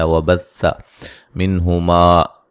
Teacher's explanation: نون ساکن کا یہاں اظہار ہے، غنہ نہیں کریں گے